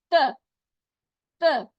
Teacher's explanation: अब क्या करना है, हमने एक एक नुक्ता गिराया ना, तो जबान भी पीछे होगी, थोड़ी सी स्लाइटली उसकी जड़ के ऊपर के दो दांतों के जड़ के साथ टकराएगी, ठीक है, ऊपर के दो दांतों की जड़ से टकराएगी, वहां पे रखेंगे तो अदा होगा त